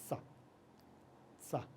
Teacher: हमारी जीभ जो आएगी दांतों के पीछे से रहेगी, बिल्कुल धीरे से बोलेंगे सा। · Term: दंत सा